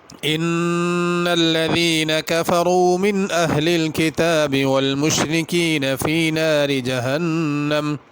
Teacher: جہنم کے نون پہ غنہ ہے